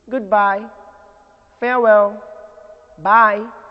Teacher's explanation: farewell greetings usually take the rising tune